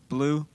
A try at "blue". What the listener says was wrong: Blue. No, you got to go like higher to lower.